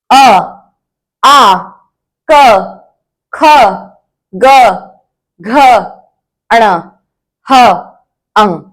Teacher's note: जो सीधे इनकी आवाज है वो हमारे गले से आती है, तो ये होते हैं कंठया वर्णः, इसमें क वर्ग सम्मिलित होता है।